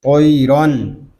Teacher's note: را کو بھی پور پڑھیں گے کیونکہ را کے اوپر دو زبر کی تنوین آ گئی ہے۔ آگے الف جو ہے یہ زائد ہے، اس الف کو ہم نہیں پڑھیں گے۔